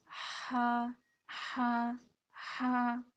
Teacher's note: ہا کو جب ہم ادا کریں گے تو اس طرح دیکھیں سانس کی آواز بھی آ رہی ہوتی ہے